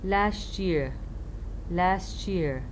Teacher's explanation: صوت الت ويجي بعدها صوت الي يحولها إلى صوت تش